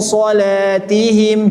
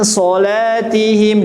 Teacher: Masukkan hidung, lewat mulut juga ngalir sambil ditebalkan.